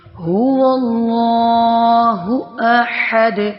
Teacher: ہو اقصی حلق سے ادا ہو رہا ہے، احد وسط حلق سے ادا ہو رہا ہے